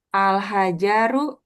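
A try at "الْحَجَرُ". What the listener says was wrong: Ja-nya pendek.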